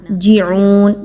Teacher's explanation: یرجعون، را ساکن سے پہلے حرف یا آ رہا ہے، را کی ادائیگی کو پر پڑھیں گے، باریک نہیں رکھنا۔ جیعون، جیم زیر جی، جے کی آواز نہیں آنی چاہیے بلکہ جیم زیر جی